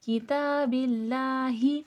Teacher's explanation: ये वाला हा अक्साए हलक से अदा होगा